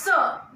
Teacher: इस स को का उच्चारण करने के लिए हमें जीभ को अपने दांतों तक लाना पड़ता है,